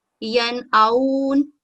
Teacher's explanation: نون ساکن کے بعد حمزہ ہے، حروف ہلکی ہے، تو ہم یہاں پر نون کا غنہ نہیں کریں گے اور اس کو نون کو واضح ادا کریں گے